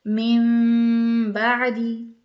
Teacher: ناک میں بھی آواز جاری ہے، غنہ بھی ہو رہا ہے، وہ نون اور تنوین میم میں بدل گیا